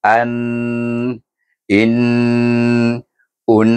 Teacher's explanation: Makna bunyi nun tu lama dengan lebih kadar dua harakat. Kalau kita sebut a i u satu harakat. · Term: berdengung